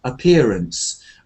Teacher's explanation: the word appearance is one of those words like ahead, away, appear. There's no stress on the first a.